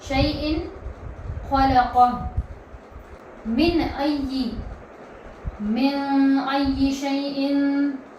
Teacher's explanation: تنوین کے بعد یہاں پر حروف حلقی میں سے آیا ہے خ، تو یہاں پر بھی آواز کیا ہوگی؟ ظاہر ہوگی